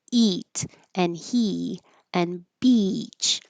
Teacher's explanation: E is the eat up here where your tongue is in the front pushing towards the front very high very tense.